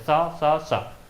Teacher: किसी प्रकार की कोई कंपन आपकी ध्वनि आपको सुनाई नहीं दे रही है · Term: अघोष